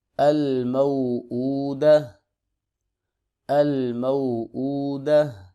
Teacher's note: اگر یہاں پر وقف کریں گے تو تا جو ہے یہ ہا میں تبدیل ہو جائے گی اور ساکن ہو جائے گی